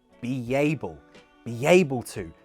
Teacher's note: We insert a yuh sound between B and able.